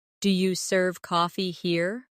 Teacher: In casual speech, do you becomes d'ya. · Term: dia